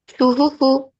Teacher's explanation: ফায়ের উপরে পেশ আছে, পেশটি হলো হালকা, হালকা করে জলদি পড়তে হয়, টান দেওয়া নিষেধ